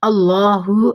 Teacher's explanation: اگر ہا کے اوپر کوئی زبر زیر پیش آ جاتی تو ہم اس کو اس طرح ہی پڑھتے، لیکن ابھی فی الحال یہاں ہا ساکتہ ہے، یعنی ہا زیادہ نہیں پڑھا جا رہا